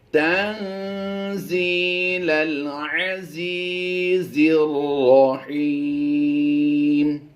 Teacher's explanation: زا یا زی میں ہم نے یا مدہ کرتے ہوئے لمبا کرنا ہے، یہاں بھی زی میں لمبا کریں گے اور ہا یا زرحی میں بھی ہم لمبا کریں گے۔